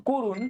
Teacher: করুণের এখানেও কিন্তু ক এর সাথে একটা অ আছে, ঠিক আছে, কিন্তু এটা উচ্চারণ হয়েছে কো। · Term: সংবৃত উচ্চারণ